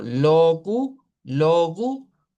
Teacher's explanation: esta o es como más larga porque es la o completa